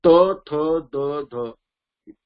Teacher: जी जीभ जी आहे ती आपण दाताला प्रेस करतो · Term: दंतज